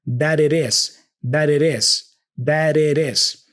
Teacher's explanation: the T for it also flaps to connect with the is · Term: flap T